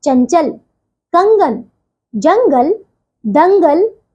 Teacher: अनुस्वार देखिए। इसका उच्चारण नाक से होता है।